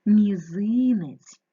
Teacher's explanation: перший звук вимовляється м'яко м останній звук вимовляється м'яко ть наголос мізинець ненаголошений е наближається у вимові до и порахуй